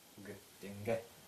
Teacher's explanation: Так как гласный переднего ряда, то и взрывная звонкая согласная переднего ряда.